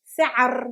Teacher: Difficult because there is no vowel between the عين and the R.